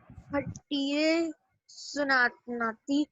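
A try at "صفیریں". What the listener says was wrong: بیٹے ایسے بولیں, سفیریں سناتی. یہ فے ہے, سفیریں. سفیریں.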